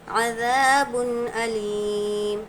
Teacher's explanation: تنوین کے بعد جو حمزہ ہے اس لیے نون کی آواز کو ہم کو ظاہر کر کے پڑھنا ہے